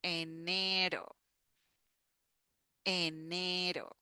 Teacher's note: that is the sound do, do, do, do, the like the flap T that we have in English for butter